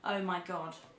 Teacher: Coz we tend to end on a minor note, we go down, always go down